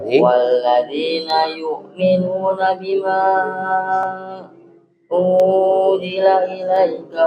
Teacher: Unzila ilaika, nggak boleh panjangkan la-nya.